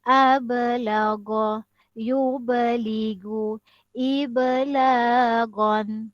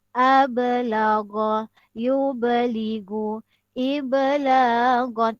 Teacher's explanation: Dikatakan dia qalqalah sughra, bermakna lantunan dia adalah lantunan yang kecil.